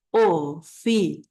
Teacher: tenemos una cerrada que es la i Y tenemos una abierta que es la a dijimos que oficial es diptongo por qué porque nosotros decimos oficial